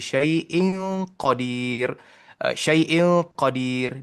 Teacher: Di situ ada a ikhfa. Ikhfa di mana bunyi saiin dia tak dilengkapkan